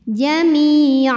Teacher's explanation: Sukun didahului baris kasrah maka huruf mim panjang dua harakat Jamia jika berhenti di Ain maka ini panjang dua harakat nama hukumnya adalah Mad iwad sebabnya karena baris tanwin fathah ini